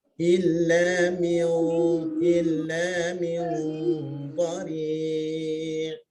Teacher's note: nun itu dibesarkan sedikit, raikan pada huruf dad